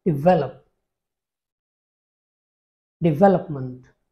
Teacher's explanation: again the stress falls on the second syllable